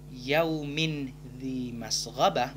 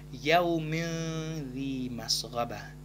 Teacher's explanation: Karena ikhfa, maka kita harus mendengungkannya. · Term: ikhfa hakiki